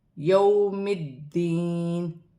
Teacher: یا ساکن سے پہلے زیر ہے، یا مدہ بن رہی ہے، ایک الف کی مقدار کھینچ کر پڑھا جائے گا۔ · واو ساکن سے پہلے زبر ہے، واو لین بنے گی، اسے کھینچا نہیں جائے گا۔ دال مشدد ہے، جماؤں کے ساتھ ادا کیا جائے گا اور اپنے سے پہلے حرف کی حرکت کے ساتھ ملا کر پڑھا جائے گا۔